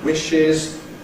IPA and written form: ˈwɪʃɪz (wishes)